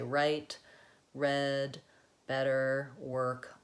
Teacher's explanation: All of those have the same R sound. I'm not changing to a vowel schwa, any of that. I also use the same R in blends. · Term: American R